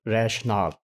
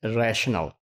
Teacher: we'll be using rationale with E and we will pronounce it with second stress syllable